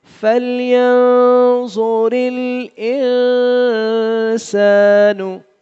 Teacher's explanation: فَلْيَنْظُرِ الْإِنسان میں نون ساکن ہے، یہاں بھی ناک میں آواز چھپے گی